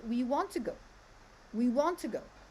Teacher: We here is a pronoun, so it's unstressed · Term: sentence stress